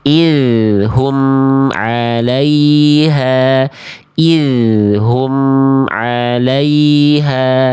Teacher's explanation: biarkan bunyi am-nya mengalir dulu sedikit sampai kita antar ke huruf ainnya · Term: mim sukun